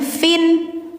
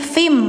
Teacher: bacanya jangan fin tapi fim langsung dimasukkan ke mim ya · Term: idgum